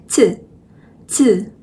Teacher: ch is z with a strong breath and a lot of spit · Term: aspirated sounds